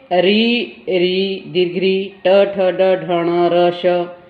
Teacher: मूर्धा में देखिए री दीर्घ री, ट ठ ड ढ ण र श। इनके उच्चारण में जीवा ऊपर के दांतों के साथ वाले भाग को स्पर्श करती है, मुड़ जाती है।